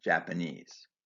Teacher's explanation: Japanese is stressed on the final syllable